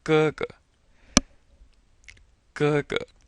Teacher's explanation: Ge, ge, ge. And you'll notice that the first ge is a first tone, and then the second one is the neutral.